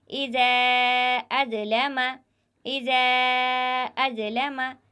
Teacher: پہلے کلمے کے آخری میں حرف مدہ ہے اور دوسرا کلمہ جو شروع ہو رہا ہے وہ حمزہ سے شروع ہو رہا ہے، تو یہاں پر بھی مد منفصل ہوگا۔ اس حرف کو بھی ہم 3 الف کے برابر کھینچ کر پڑھیں گے